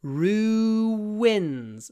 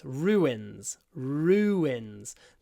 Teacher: we connect the sounds with a W ru wins so you end up with Rue and then wins